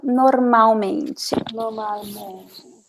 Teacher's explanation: Pretend there is no L. Pretend there is a W or a U.